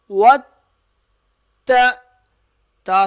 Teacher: تا سختی سے ادا ہوگا، ذرا رک کر ادا کیا جائے گا، اور واو کے درمیان میں یہ جو تا اور واو کے درمیان میں الف لکھا ہوا ہے یہ الف نہیں پڑھیں گے۔